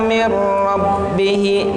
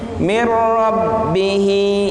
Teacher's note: nun mati bertemu dengan ro, masuk ke dalam ro suara nunnya. Mir rabbihi, hi panjangnya 2 harokat atau 1 alif.